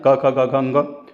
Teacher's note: क वर्ग का उच्चारण स्थान कंठ है।